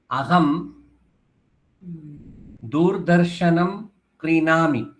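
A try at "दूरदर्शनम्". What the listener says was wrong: ठीक है, दूर में र हलंत नहीं है, रा में भी आ है, दूरदर्शन।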